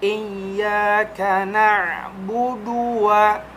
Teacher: huruf ain itu harus benar-benar terasa ya, di tengah tenggorokan, makhraj huruf ain